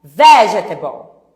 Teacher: A sílaba forte é a primeira. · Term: sílaba tônica